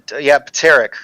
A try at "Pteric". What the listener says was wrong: Think like pterodactyl. The P is silent.